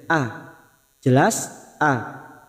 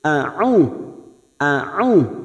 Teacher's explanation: Hamzah sifatnya siddah, a, jelas a. Huruf ain mempunyai sifat tawasud